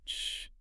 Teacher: Your tongue arches up toward the roof of your mouth, leaving just enough space for the air to hiss through. · Fricative, meaning it relies on friction. So the air is being pushed through a narrow channel in the mouth. But it's never completely stopped. It's a continuous, smooth flow of air. Precisely. As long as you have breath in your lungs, you can sustain an ish sound.